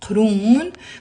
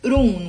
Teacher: And Urun is one syllable. It's written with a qaf in Arabic. Let me write it down. Qurun. But in the Lebanese dialect, we usually pronounce it Urun.